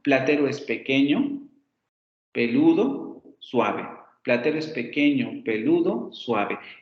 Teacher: no por ejemplo esta flecha se hace descendente que representa justamente una cadencia descendente al final de cada uno de los componentes que tienen la oración